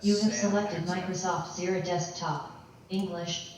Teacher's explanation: the gaps between words are kind of weird. They're not rolling one phoneme into the next.